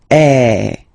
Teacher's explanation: And the sound that you will have to produce is e. So it's really open. I mean the sound is really open. And normally your mouth should be opened a little bit more than with the accent as well. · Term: grav